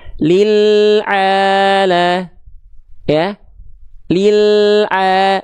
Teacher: Inhiraf itu penyimpangan makhraj, diseret ketika melafalkan lam, tadinya kan ke depan tuh, langit-langit depan. Nah, sekarang agak disimpangkan ke kanan atau ke kiri, boleh salah satunya, pilih salah satu.